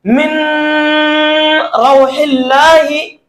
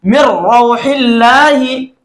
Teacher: मीम को हम direct रा के साथ मिलाएंगे और नून की जो आवाज है हम उसको खत्म कर देंगे, उसको नहीं पढ़ेंगे। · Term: इदगाम बिला गुन्ना